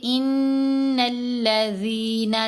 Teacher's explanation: ان الذین، نون کے اوپر ہم نے غنہ کیا اور لام سے ملا لیا. زال کو 2 حرکات کی مقدار لمبا کیا کیونکہ زال کے نیچے زیر ہے، ساتھ یا ساکن ہے، یا مدہ ہے.